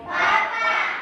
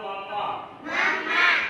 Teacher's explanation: पै वर्ग। पै वर्ग में जितने भी वर्ण है ना आप उनको बोल के देखो। सब में आपके होठ चिपकेंगे। · दोनों होठ चिपक रहे हैं ना।